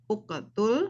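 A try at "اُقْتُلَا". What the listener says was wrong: nggak usah dikolkolahkan langsung aja. Uktula.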